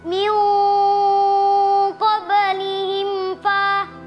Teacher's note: mim sukun bertemu huruf fa dibaca jelas